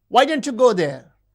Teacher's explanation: The high fall in double question refers to surprise.